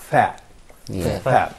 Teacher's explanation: the tip of the tongue, as I said before, coming between the upper and lower teeth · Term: interdental